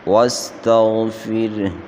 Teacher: غین کو موٹا پڑھیں گے